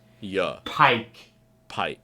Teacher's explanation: Really drive into that long I sound. Remember the monotone New York monotone go down in pitch at the end of the word